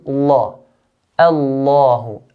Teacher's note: we make lam in the word Allah heavy all the time. Whenever the word Allah starts in an ayah, make it heavy all the time. · Whenever the word Allah starts in an ayah, make it heavy all the time. But we just have to be careful that the alif make it light and lam make it heavy